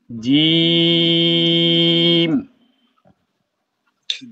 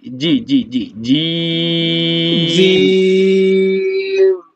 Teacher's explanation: আগাটা লাগবে না, মাঝখানটা সরাসরি উপরের দিকে লাগবে, আগাটা লাগবে না, মাঝখানটা উপরের দিকে লাগবে।